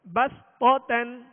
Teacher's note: صا کو پر پڑھیں گے اور تا کو باریک پڑھیں گے